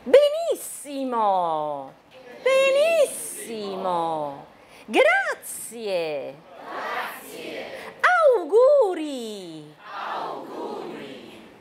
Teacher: 会有这个▁accent。好，这里已经让你们注意到了，特别是那个鼻音后面的啊、语调。语调呢，就还有那个肯定句的语调，对不对？从中间往下哈。Mi▁chiamo▁Gregorio.▁Mi▁chiamo▁Gregorio.▁Sono▁uno▁studente▁taiwanese.▁Sono▁uno▁studente.▁Sono▁un▁insegnante.▁好，这里这个语调是什么呢？我补充了一下，因为上一次没有讲哈。这个是你列出几个项目的时候，比方说▁vorrei▁delle▁mele，▁我想要一些苹果、一些梨子跟一些流程。好，那就▁vorrei▁delle▁mele，▁delle▁pere，▁然后最后是一个肯定句▁e▁delle▁arance。好，然后感叹。感叹句呢是从比较高跟那个肯定句差不多， 可是肯定句是从中间往下，那感叹句是从很高往下